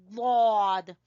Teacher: जबान की करवट को ऊपर वाली दाढ़ों की जड़ से लगाना है तो अदा होगा दौद